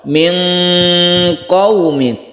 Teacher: Kita dengungkan dan kita samarkan nun mati. Ketika kita membaca nun mati kita bersiap huruf qaf. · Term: ikhfa hakiki